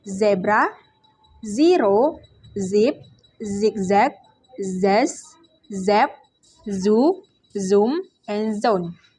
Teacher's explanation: voice alveolar fricative sound Z